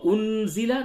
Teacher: نون ساکن کے بعد زا ہے، اس جگہ پہ اخفا ہوگا